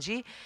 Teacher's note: the sound stops because all the sound is going through your nose when you do NG